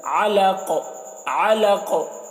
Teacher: यहाँ पर नून में इख्फ़ा नहीं करना है क्योंकि नून साकिन के बाद आइन है हुरूफ़ हल्के में से, तो यहाँ पर इज़हार होगा, तो जल्दी पढ़ेंगे। मिन अलक़, अलक़ में देखिए आइन है तो आइन को हलक से अदा करें